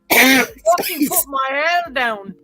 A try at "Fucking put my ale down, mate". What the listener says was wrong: Mate. You forgot mate.